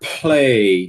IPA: pleɪ